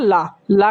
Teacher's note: ला क्या है ये दोस्तों दंत से बोला जाता है